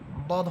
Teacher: এখানে বদ হরফের মাখরাজ হচ্ছে জিহ্বার গোড়ার কিনারা। জিহ্বার গোড়ার কিনারা উপরের মারির দাঁতের গোড়ার সাথে লাগবে। বদ হরফটি, বদ হরফের মাখরাজ বলতেছি জিহ্বার গোড়া, জিহ্বার গোড়ার কিনারা উপরের মারির দাঁতের গোড়ার সাথে লাগবে, বদ।